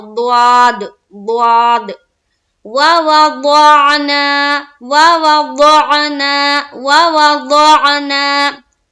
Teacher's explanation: द्वाद जबान को करवट लेते हुए निकालते हैं, दाहिनी तरफ की गाल का जो हिस्सा होता है उससे सटाएंगे जबान को करवट लेते हुए